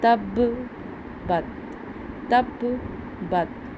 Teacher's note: تا پڑی زبر، با ساکن تب، اب با حروف قلقلہ میں ہے، ساکن جب کریں گے تو ہم اس پہ قلقلہ بھی کریں گے۔ تا پڑی زبر، با ساکن تب، با پڑی زبر، تا ساکن بت، تب بت، تب بت۔